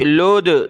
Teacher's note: لام کو دال کے ساتھ, لام دال پیش لود, دال پر قلقلہ ہوگا